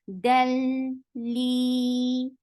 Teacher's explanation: This is idgham without gunna. So you're not keeping sound in your nose at all. Del, li, 2 counts long.